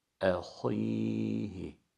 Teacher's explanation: Ahihi derken ha'nın kalınlığını tekellüf yapmadan belirtmemiz gerekiyor. Hoy şeklinde abartılı, tekellüflü bir kalınlık değil, inceden bir önceki kalınlık.